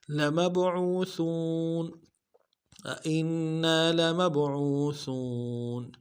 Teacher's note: میم کو با کے ساتھ ملانا ہے، با ساکن قلقلہ ہوگا، قلقلہ کریں گے